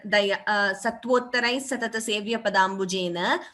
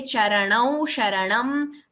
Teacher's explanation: when you say na, like here, Satvottarai Satata Sevya Padambujena, we are not twisting the tongue as much. Whereas when you say Charanau Sharanam, we are twisting the tongue more. And that differentiation should be clear between the two nas, na and na.